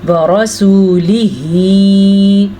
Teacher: रॉ को हम पुर पढ़ेंगे क्योंकि रॉ के ऊपर ज़बर है। रॉ के ऊपर जब ज़बर और पेश हो तो रॉ पुर पढ़ी जाती है।